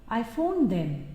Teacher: the rising pitch at the end of a sentence indicates that the speaker is waiting for a reply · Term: Rising intonation